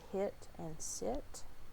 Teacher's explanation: high, front, unrounded, and lax, and it makes the I sound, such as hit and sit